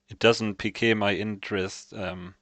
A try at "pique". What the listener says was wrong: Peak. Not PK, not for football guy. Peak. peak. Not like the Barcelona player, it's peak. Like the term that the Zoomers always use.